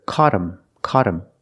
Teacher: that t is between vowels phonetically so it changes to a fast D